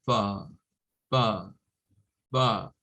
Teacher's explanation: Un británico lo va a decir más como far, far, far, sin la R